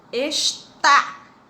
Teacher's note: A sílaba tônica é a última, então ela é uma oxítona.